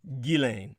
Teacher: regardless of accent, the G is a hard one and the S is silent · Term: hard G